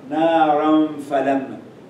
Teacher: You hear the ghunna, but you don't hear the noon. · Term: ikhfa